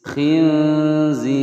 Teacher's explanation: roknya dibaca tipis karena rok berharokat kasroh yang disukunkan, kemudian sebelumnya ada ya sukun dan sebelumnya lagi ada huruf yang berharokat kasroh ya.